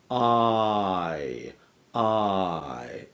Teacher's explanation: It's actually a combination of ah plus E. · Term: diphthongs